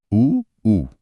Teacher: बोलते समय होंठ अपने आप गोल हो जाते हैं। होठों के बिना यह स्वर बोले ही नहीं जा सकते। · होठों का गोल होना तो जरूरी है। इसीलिए उ और उ का उच्चारण स्थान ओष्ठ है।